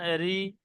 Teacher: মুখটা গোল হচ্ছে না, একে বারিক বলা হয়, মানে পাতলা আওয়াজ।